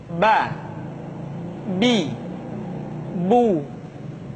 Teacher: Huruf Ba dikeluarkan dengan cara merapatkan kedua bibir kita